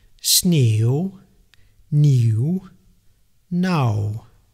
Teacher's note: The W at the end of a word we pronounce even more softly, almost like being a part of a vowel, usually preceded by the letter U. · So this W sound actually is almost not really pronounced.